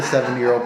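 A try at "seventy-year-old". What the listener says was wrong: sounds like you're saying seven year old not 70 70 year old okay express that deep part of it because i can't hear you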